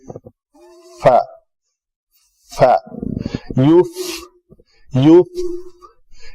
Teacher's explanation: فا کا مخرج کیا ہے، فا کی ادائیگی کے لیے فا اوپر والے دونوں دانت جو ہیں نیچے والے ہونٹ کے اوپر آ کے ٹچ کرتے ہیں